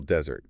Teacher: If you stress the first syllable desert, you're talking about the dry, sandy place.